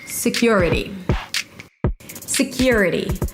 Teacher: Primary stress is on the second syllable.